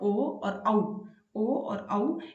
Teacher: ओ और औ का उच्चारण स्थान कंठ और ओष्ठ दोनों मिलके होते हैं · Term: कंठोष्ठम